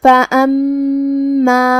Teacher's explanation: میم پہ تشدید ہے، 2 حرف کے برابر میم کو ادا کرنا ہے